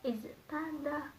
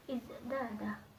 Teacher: Huruf ta di sini yang sifatnya mahmus berubah menjadi huruf dal yang sifatnya jahar sama dengan huruf za, di mana huruf za ini berpengaruh kepada huruf ta sehingga huruf ta ini berubah menjadi huruf dal yang sama-sama sifatnya jahar sama dengan huruf za.